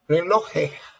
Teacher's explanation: That's a problem that we have in Venezuela, that we do not pronounce the s's.